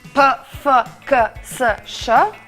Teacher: кога викам П, не ми трепарат гласните жици или Ф, К, С